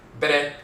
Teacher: So BN is Bene. But BR with the rolling R, the tongue tapping the roof of the mouth once is Bere.